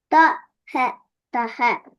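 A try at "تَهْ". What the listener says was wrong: தா அல்ல தா அல்ல இப்ப உங்கோட கண்ண பகுதி எல்லாம் பெருசா வரலையே சவுண்ட் தடிப்பம் வரலையே சும்மா நோர்மலாதான் தான்னு வந்துச்சு. தடிமம்மா வரணும்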